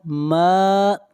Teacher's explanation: میم کے اوپر کھڑی زبر ہے، میم کو کھینچ کر پڑھیں گے ایک الف کے برابر